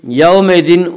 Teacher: واولین وہ واو جو ساکن ہو اس سے پہلے زبر ہو، واولین کو نرم آواز کے ساتھ پڑھیں گے